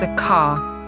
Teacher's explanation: British English is non-rotic, meaning we don't pronounce the R at the end of a word.